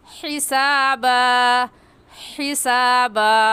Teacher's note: ये हा हलक के दरमियान से निकलता है